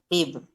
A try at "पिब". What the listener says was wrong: देखिए वो ब पूरा है, पी पीब नहीं है। हलंत होगा, लेकिन इसमें हलंत है नहीं है। पीब, यह संपूर्ण